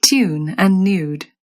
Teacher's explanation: That vowel picked up a y sound when it showed up after a T, a D, or an N